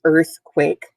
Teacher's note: earthquake two syllables it's a compound word by the way you'll be seeing that more next week earth is where the emphasis is